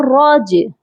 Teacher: جیم جو ہے حروف قلقلہ ہے اسی لیے یہاں پر قلقلہ ہوگا